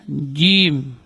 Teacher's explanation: huruf jim, ar-rajim, jim, ini termasuk huruf syiddah. Dia keluar dari tengah-tengah lidah. Jim, tidak boleh ada angin yang keluar juga.